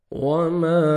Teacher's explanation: الف مد ہے، الف سے پہلے زبر ہے، میم کو اپنے 1 سیکنڈ کھینچنا ہے